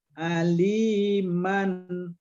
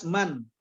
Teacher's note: Bacaannya tidak boleh berdengung, hanya dijelaskan saja aliman. Jadi mannya jelas man ya. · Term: izhar halqi